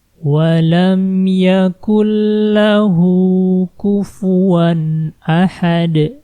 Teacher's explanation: jangan dibaca nunnya, jangan yakun lahu, tapi langsung masukkan ke lam. Yakul lahu, seperti itu ya, dimasukkan langsung ke la. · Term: memasukkan tanpa dengung